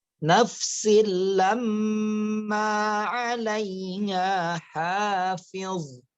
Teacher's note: Idgham bila gunnah dimasukkan dengan tidak didengungkan.